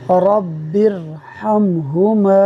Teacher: دیکھیے را کے اوپر زبر ہے، را کو پر پڑھیں گے۔